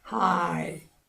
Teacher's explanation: 그 다음에 뒤에 대단한 영예입니다 할 때 high 한음절이니까 이것도 high 성대 두 번 떨린다고 하면 안 돼요. 하 하고 있다가 성대가 진동 되는 동안에 이로 넘어가서 high 이중 모음 이름절입니다